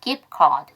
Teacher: gift가 FT인데 카드가 C죠. after C니까 두 번째 생략